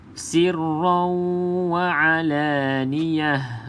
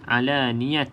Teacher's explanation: dekat ta ni kalau berhenti bunyi dia macam ha, bukan alaniyat. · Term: ta bulat